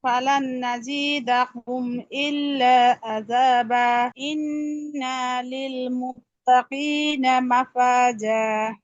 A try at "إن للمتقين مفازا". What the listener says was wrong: ইন্না নুনের টান হবে না আপু। ইন্না লিল মুত্তাকিনা মাফাজা